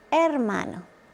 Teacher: The H in Spanish is silent.